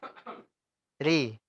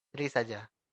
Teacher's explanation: Ya, kalau ro dan ru tebal. Tapi yang tipis hanya ri.